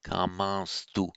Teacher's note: It separate out kaman tu, and it's just by regular sandhi kamans tu that it nasalizes the vowel and puts in an s before a following th